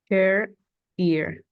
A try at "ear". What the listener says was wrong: Ok, pero allí ya no sonó la E, solo sonó el R. Son dos sonidos. Chair. Chair, ear. Ear.